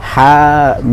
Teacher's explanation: maka dibaca Dua harakat Mad Thobi'i